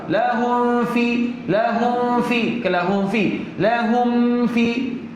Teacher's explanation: Mim ni tak sampai lagi hukum. Hukum ni izhar syafawi. Jangan masuk pada fa.